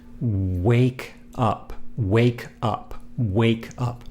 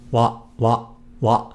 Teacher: when you say the Japanese wa sound, don't round or protrude your lips at the beginning of the sound